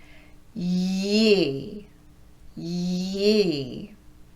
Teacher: we're going to keep it up high and glide right into a long E from that Y. Ye, ye. Notice how I'm not letting my voice break between the two sounds.